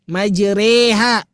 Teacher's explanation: Ro, ri, ru. Tiba-tiba kita baca menjadi re. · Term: mustahak